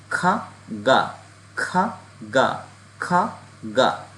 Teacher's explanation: আমাদের কণ্ঠনালের শেষ অংশ থেকে দুইটা প্রোনাউন্স হবে